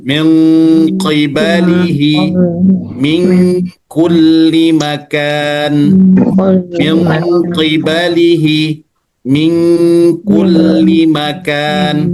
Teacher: Biasanya itu kurang lebih nanti menjadi eng. Nah, eng itu lebih kuat pada qaf, agak sedikit tipis pada kaf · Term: ikhfa ab'ad